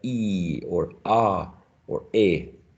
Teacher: one pure vowel sound like e or ah or a okay and the articulation is uh fixed it doesn't glide it doesn't go like oh so we have two sounds one